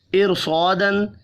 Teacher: زیر ہونے کے باوجود حروف مستعلیہ کی وجہ سے پر پڑھ رہے ہیں